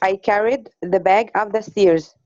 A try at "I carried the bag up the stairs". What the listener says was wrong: Okay. MashaAllah. Very, very, very good.